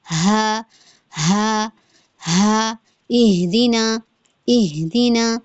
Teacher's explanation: وہ جو ہا ہے سینے کی طرف کو جاتی ہے, اس کی آواز اقصی حلق سے ادا ہوتا ہے. ہا ہا ہا, اہدینا اہدینا, سینہ بھی وائبریٹ ہو رہا ہے نا, تو اس میں تھوڑا بھاری پن سا بھی آ رہا ہے اس ہا میں.